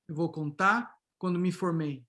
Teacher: This speaker is from the interior of São Paulo. He has the retroflex R, so and deletion, of course.